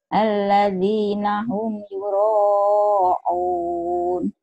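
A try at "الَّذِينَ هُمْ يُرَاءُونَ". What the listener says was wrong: Biasa aja bukan ain.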